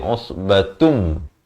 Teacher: Usbatum di sini masuk berserta dengung. Asalnya usbatun, tantin tun. Tapi datang mim terus masuk jadi usbatum, ya, dengan dengung dua harakat.